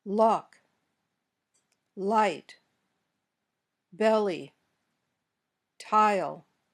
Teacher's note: your mouth when you say all the tip of your tongue touches but the sides are open · the sides of your tongue should feel feel cold air because that's where the air comes through the open space beside your tongue